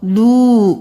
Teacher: لام پیش واو مد لو، 5 انگلی کو برابر کھینچیں